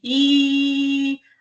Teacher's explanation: Então, aqui, se nós pegarmos, por exemplo, o I e o U para testarmos, nós vamos ver que no I, se falarmos vários Is ao mesmo tempo, então fica assim, I, a boca não é redonda, ela fica um pouco mais esticada. Então, I, diferente de U. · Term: vogais distendidas